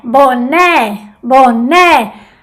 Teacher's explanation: Bo más débil, ne más fuerte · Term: acento tónico